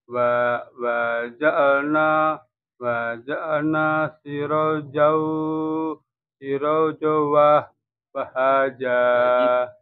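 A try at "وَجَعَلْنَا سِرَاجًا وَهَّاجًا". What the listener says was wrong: Wa-nya tidak panjang. Langsung. Tidak wajah, tapi wa ja'alna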